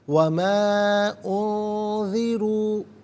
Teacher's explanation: اخفا کہتے ہیں ناک میں آواز لے جا کر گنگنانا، را پر پیش ہے، را کو پر کر کے پڑھا جائے گا